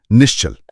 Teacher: अगर विसर्ग के बाद च या छ आए च या छ तो विसर्ग तालव्य श बन जाता है।